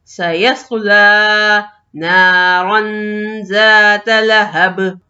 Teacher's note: لام کے اوپر کھڑا زبر، اور کھڑا زبر 1 الف کے برابر کھینچ کے پڑھا جائے گا۔